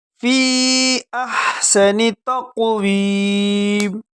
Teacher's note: ہا کو گلے کے شروع سے ادا کریں گے، سین میں سیٹی کی آواز نکالیں گے۔ تقویم، قاف کو موٹا کر کے پڑھیں گے جھٹکے کے ساتھ۔